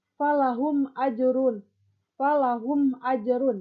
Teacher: Nah, maka huruf bacaannya disebut izhar safawi. Nah, cara membacanya bunyi mim disuarakan dengan terang dan jelas tanpa berdengung di bibir dengan menutup mulut